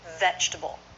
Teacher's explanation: Vegetable, not vegetable. Just 3 syllables with first syllable stress.